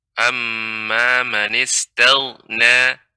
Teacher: perhatikan huruf ghain jangan sampai memantul sehingga tagna